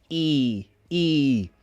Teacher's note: It needs to be up in the mouth, while the front of the tongue, down. Back of the tongue, up. E. A smile does help, but it's not everything.